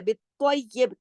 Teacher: और बा पे हमने बा की जेर को हमने रोक दिया, कलकला कर दिया, बित्तय्यिब, तो मोटा पड़ा जाएगा बा कलकले के साथ।